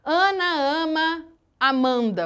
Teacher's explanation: Percebam a repetição do A com som de A mesmo aberto ou som de AN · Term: assonância